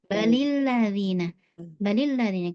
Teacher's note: Karena antum lidahnya dinaikkan saat lam, jangan dinaikkan.